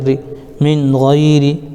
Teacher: غین یا زبر غی من غی، را کے نیچے زیر ہے، زیر کو جلدی پڑھے، تھوڑا بھی نہ کھینچے، معروف پڑھیں، مجھول آواز سے بچے، زیر کی آواز نیچے کو جاتی ہے